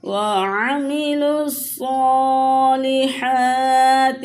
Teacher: صاد کے اوپر بھی کھڑی حرکات ہے، صاد حروف مستعلیہ ہے، اسے پورا پڑھیں گے، اور ہا کے اوپر بھی کھڑی حرکات ہے، ان دونوں حرفوں کو کھینچ کے پڑھیں گے۔